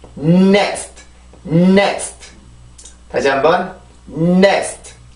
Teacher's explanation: 앞에 지금 은 비슷한 소리가 나오긴 하지만 그 이유는 이 N 발음의 순수 소리가 그거라서 그래요. 그 치조를 눌러주고 그 비강을 코를 통해서 공기가 나오기 때문에 그 혀를 누르고 코로 소리를 내면 은 소리가 만들어지게 되는데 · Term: N 발음의 순수한 소리